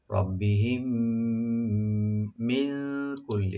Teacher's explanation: মিম সাকিন পরে যেহেতু মিম আসছে এখানে ইদগাম সফবি হয়ে যাবে, দুইটা মিম একসাথে মিলে গুণনা সহকারে করা হবে। রব্বিহিম মিন কুল্লি, এখানে একফা হবে মিন কুল্লি লি বলবেন।